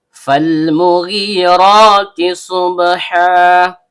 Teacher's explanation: Fa huruf bibir, yaitu perut bibir bawah bertemu dengan ujung gigi seri atas. Karena fa-nya berharokat fathah diikuti alif layyinah, maka seharusnya terjadi mad tabi'i.